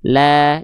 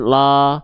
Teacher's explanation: Nah, vokal a itu harus dibaca tipis. · Lamnya tipis, berharokat baris atas, gitu ya. · Tipiskan pelafalannya. La jangan lo. La bukan lo sa bukan ee apa bukan ee bukan lo tapi la.